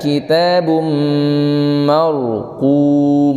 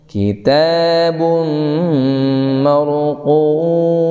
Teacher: tidak markum tapi marqum, tebelin huruf ro-nya